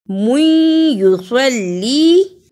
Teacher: سواد کو موٹا پڑھنا اور سواد کو لام سے بھی ملانا ہے، لام کے نیچے زیر اور یا پر جزم ہے. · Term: ادغام